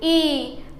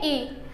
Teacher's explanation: ये दीर्घ ई जो है इसमें ह्रस्व स्वर से 2 गुना समय लग रहा है, अर्थात इसका उच्चारण करने में 2 मात्रा काल का समय लग रहा है। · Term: दीर्घ स्वर